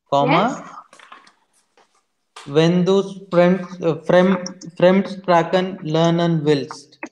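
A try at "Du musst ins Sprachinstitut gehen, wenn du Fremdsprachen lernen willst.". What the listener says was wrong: Sehr gut. Wenn du Fremdsprache lernen willst. The verb goes at the end.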